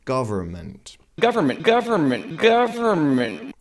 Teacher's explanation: the r is pronounced strongly which is typical for American accents in British and Australian accents we only pronounce the r if